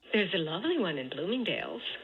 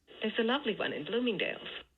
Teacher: And if you're really tuning in closely, you should be able to hear a dip, the L starred element on those stressed syllables for this utterance, for both of the words.